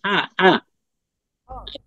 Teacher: হা এর মাখরাজটা হচ্ছে গলার মাঝখানে